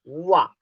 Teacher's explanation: निचला होंठ दांतों को स्पर्श करता है, निचला होंठ दांतों को स्पर्श करता है, उन्हें दंत्योष्ठ व्यंजन कहते हैं।